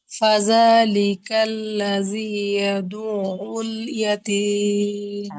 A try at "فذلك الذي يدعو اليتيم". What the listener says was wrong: আপনার জালের মাথাতে সমস্যা আছে, জিহ্বা বের করেন তাহলে ঠিক হয়ে যাবে, হ্যাঁ। ফাজালি, জালি কেন, ভিতরে মুখের ভিতরে জিহ্বা ঢুকে গেলে জালি হয়ে যায়।